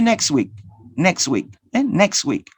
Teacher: The ta sound is omitted. You don't pronounce the sound ta. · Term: elision